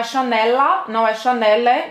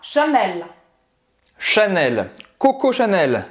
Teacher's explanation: Então é Chanel, você vai simplesmente pronunciar esse L, vai terminar a pronúncia no céu da boca e solta a língua.